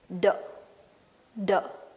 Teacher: Tip of the tongue will be touching the teeth ridge, backside of your front teeth, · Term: voiced sound